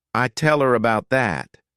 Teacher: when these words go unstressed people tend to just omit the letter H and the sound that it corresponds to